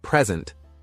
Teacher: stressing the first syllable gives you a noun